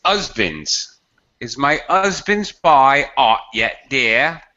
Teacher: she's speaking with such an accent she can't pronounce h